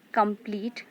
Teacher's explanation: So complete word also has two syllables. Here come is unstressed and pleat is stressed.